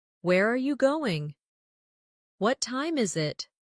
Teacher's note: for information questions, those starting with who, what, when, where, why, how, the tone often falls at the end. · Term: falling tone